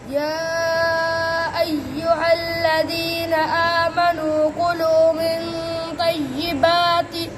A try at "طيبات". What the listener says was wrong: नहीं गलत गलत ये हाँ नहीं बनानी ये ता ही रहेगी लंबी ता है ना तय्यिबात